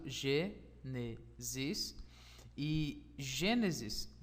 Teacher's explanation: sua as suas sílabas três sílabas no caso Genesis e Gênesis tem a sua força tônica sua sílaba tônica está na antepenúltima sílaba